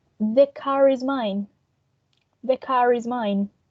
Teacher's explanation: because of the linking r we are going to pronounce the final r sound